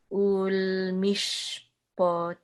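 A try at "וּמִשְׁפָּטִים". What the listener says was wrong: Mishpotim. further back. Mishpotim. bend your tongue, and the tip of your tongue should be further to the arch in the roof of your mouth.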